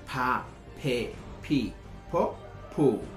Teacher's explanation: Bilabial, porque si se dan cuenta, cuando yo produzco el sonido, se produce como pa. El labio superior y el labio inferior cierran el pase del aire y pa, una pequeña explosión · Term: sonido aspirado pa